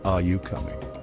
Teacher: your voice rises at the end. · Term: rising intonation